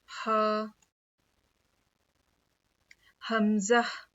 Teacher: हलक के मतलब गले के नीचे वाले हिस्से से हमजा अदा होता है।